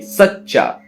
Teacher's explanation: सच्चा में जो चा है वो पहले जो सा है उसके साथ बोला जा रहा है